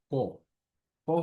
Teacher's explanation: প হচ্ছে দুই ঠোঁট দিয়ে কোনো ধরনের জোর দেওয়া ছাড়া আমরা প এর উচ্চারণ করি